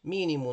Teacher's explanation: mínimo nós temos três sílabas, a mais forte a antepenúltima, é a terceira, tá bom? Então, eu tenho aqui uma proparoxítona.